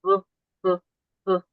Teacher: if I make the sound b, I'm using my vocal cords in order to make that sound. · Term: voiced